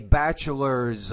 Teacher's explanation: don't forget the S on the end of that word and you want to pronounce it as a z because it comes after a voice consonant